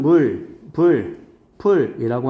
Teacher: 지금 우리 국어에서는 물, 불, 풀이라고 하는 원순 모음화가 있죠